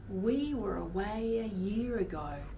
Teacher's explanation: At first, it sounds like his words are coming off normally, but eventually his voice gets cut off and strained